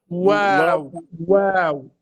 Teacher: واو من الشفتين، ضم الشفتين الأمام.